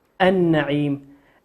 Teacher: لام ساكنة أتى بعدها حرف النون والنون من حروف اللام الشمسية ندغمها النعيم ولا نقول النعيم نقول النعيم.